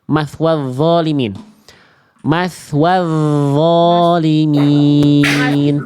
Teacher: enggak pakai bunyi nun, enggak pakai bunyi n